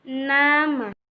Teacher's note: bunyi yang dihasilkan oleh keterlibatan ujung lidah dan gusi atas caranya ujung lidah sebagai artikulator menyentuh kaki gigi atas sebagai titik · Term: apiko alveolar